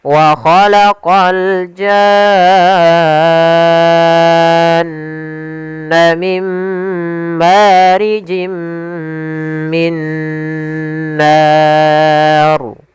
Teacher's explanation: untuk huruf ra-nya dibaca ra tafkhim karena sebelumnya yaitu fathah